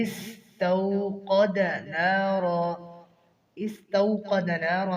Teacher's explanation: استوقد نارا میں قاف کو موٹا کر کے پڑھیں گے اور را کو بھی موٹا پڑھیں گے